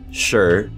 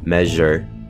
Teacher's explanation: voiceless sure and voiced measure